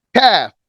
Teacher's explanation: Kaf lets the air out.